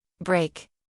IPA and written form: breɪk (Brake)